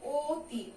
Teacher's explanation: এটার উচ্চারণ কিন্তু অতি, ও উচ্চারণ হয়, অ উচ্চারণ হয় না।